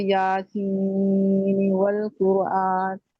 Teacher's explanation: یاسین کے آگے جو والقرآن ہے اس کا ادغام نہیں ہوگا اور نون اظہار ہوگا